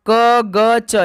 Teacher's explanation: क ग च ये तो अल्पप्राण है, लेकिन ख नहीं है भाई अल्पप्राण